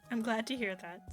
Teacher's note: we could use a little twang in there. A little nasal sound.